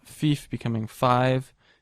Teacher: all vowels moved up one notch in terms of their pronunciation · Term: Great Vowel Shift